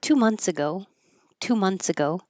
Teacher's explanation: We just change that th to a t and we say months.